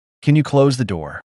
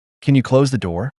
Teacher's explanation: When making polite requests, English speakers often raise their tone slightly at the end of the sentence. This rising tone signals a question and makes you sound friendlier.